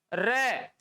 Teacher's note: तो लुढ़कते हुए गिर जाए, तो ऐसा वर्ण सिर्फ एक ही है हिंदी भाषा के अंदर, और वो है रे। रे को बोलते हैं तो जीभ थरथराती है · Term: परकंपित